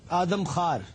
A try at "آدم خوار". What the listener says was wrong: آدم خوار. بالکل خار نہیں کہنا اور خوار بھی نہیں کہنا, اس کی درمیانی شکل.